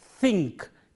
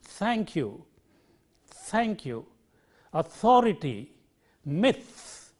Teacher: it is a dental sound produced at the upper teeth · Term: theta